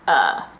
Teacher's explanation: we pronounce the o in of as a schwa